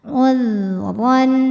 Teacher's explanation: Huruf ra dibunyikan secara tafkhim karena harokatnya di atas yaitu fathah tanwin. Cara bacanya tebal. Ran. Ran ada hukum tajwid namanya izhar halqi karena ada tanwin fathah menghadapi huruf halqi atau huruf tenggorokan yaitu hamzah, maka tanwin dibaca n jelas.